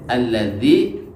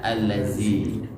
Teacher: mengubah huruf zal menjadi za, seperti pada lafaz alladzi dibaca allazi